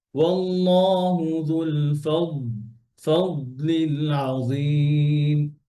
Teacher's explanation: ضادের মধ্যে রখাওয়া আছে আওয়াজ চলবে